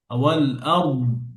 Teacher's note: দদের রখাওয়া থাকবে, আওয়াজ জারি থাকবে, কিন্তু কলকলা হবে না, বাতাস বের হবে না।